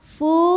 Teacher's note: dipanjangkan dua harakat yufu Fu hukum tajwidnya adalah Mad Thobi'i dahohiri sebab ada wau sukun didahului harakat damah cara bacanya dipanjangkan fa-nya dua harakat